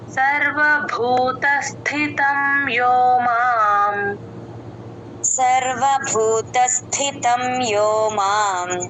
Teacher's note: సర్వభూకి మహాప్రాణం ఉంది భూతస్థితం స్థితంలో స కింద ఒత్తుత ఉత్తిహచ్ థ అది సర్వభూతస్ అని కలుపుకుంటే స కింద థ ఒత్తు క్లియర్ గా వినిపిస్తుంది.